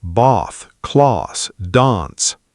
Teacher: British speakers, especially in southern England, use a longer Ah sound, bath, class, dance.